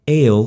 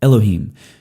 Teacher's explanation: And so El becomes Elohim. You shorten what's up front so that you can throw that accent on the end.